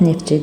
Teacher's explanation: Söz sonu F t samitləri ilə bitdi və özündən sonra samitlə başlayan şəkilçi gəldiyinə görə tələffüz zamanı t hərfi düşməlidir